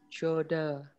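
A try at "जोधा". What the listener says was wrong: Jo, Jodha ya, Jodha. Ada H ya, ingat ya. Jodha. Jodha.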